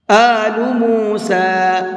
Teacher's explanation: سین کو تھوڑا سا کھینچ کر کے پڑھیں گے، اس لیے کہ اس کے اوپر کھڑا زبر ہے